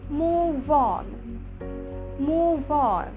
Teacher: We'll link the V sound with the N sound with a little bit O sound, but we won't say on. We'll say one.